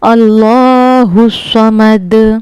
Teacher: अल्लाह के लाम को भी पुर करना है। स्वाद को भी पुर करना है और दाल पर कलकला करना है।